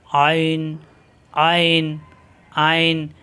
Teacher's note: এই আইন উচ্চারণ করতে গিয়ে আমরা অনেক সময় হামজা উচ্চারণ করে ফেলি